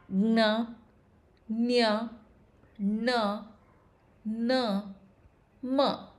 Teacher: ಮೂಗು means nose, ಸಹಾಯ means help. So, these are the vyanjanas which are pronounced with the help of the nose, that is the nasal passage. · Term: ಅನುನಾಸಿಕಾಕ್ಷರಗಳು